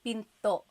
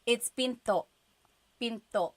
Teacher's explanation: Do you hear the glottal stop when I say pinto?